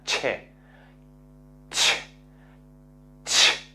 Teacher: y free katibas os explico claramente es se genera una explosión hay una contención del aire porque hay un cierre total pero después al abrirlo no se abre completamente sino que se genera una fricción